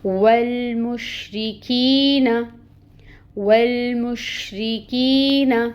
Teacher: را کے نیچے کسرہ باریکی سے ادا کریں گے 1 کاؤنٹ، اور پھر یہ یائے ساکن سے پہلے زیر کی حرکت، تو یہاں پہ یائے مد کا رول ہو رہا ہے، کی کو 2 کاؤنٹس لمبا کھینچیں گے، اور نون کے اوپر فتحہ ہے 1 کاؤنٹ آئے گا۔